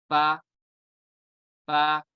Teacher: ये आपको दिख रहा होगा यहाँ पे, ऊपर वाला दांत निचले होंठ के तर हिस्से से लगेगा तो अदा होगा फा